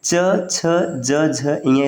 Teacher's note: इसका उच्चारण स्थान है तालु